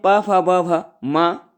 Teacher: जिस समय हमारा दोनों जो ओंठ है वो आपस में मिलते हैं, उ स्वर वर्ण को बोलते समय और पा पवर को बोलते समय पा फा ब भ मा और पा फा विशेष, इनको बोलते समय हमारा जो दोनों ओंठ है वो आपस में जुड़ जाते हैं, तो इनका ओष्ठ हो गया और ओंठ वर्ण इनका उच्चारण स्थान हो गया। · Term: ओष्ठ वर्ण